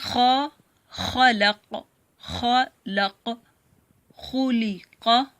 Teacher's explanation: خا بھی گلے کے اوپر والے حصے سے ادا ہوتا ہے